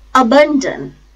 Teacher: It has three syllables. First syllable is a, which is a low feeble sound, schwa sound. Ban, second syllable, and dan, last syllable.